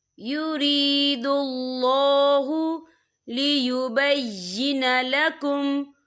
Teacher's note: یہاں اللہ کا نام پر پڑھا جائے گا کیونکہ اللہ کے نام سے پہلے پیش ہے